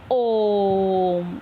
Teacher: ओम में ह्रस्व स्वर से तिगुना समय लगता है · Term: प्लुत स्वर